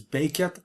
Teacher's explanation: the root for fall is bekat, with the stress at the start